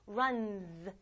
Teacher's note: s를 붙이면 끝나는 소리가 voiced, 울리면 얘도 울려서 이런 소리가 난다